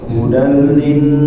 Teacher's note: nun ya, nun bertasydid ditahan sedikit. Hudal lin ditahan.